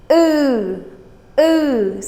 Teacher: it's more closed in the back my lips are not forward like ooh it's ooh it's a little bit like if you're